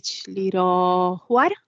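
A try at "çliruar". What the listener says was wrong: Without the H, chliruar. Chliruar.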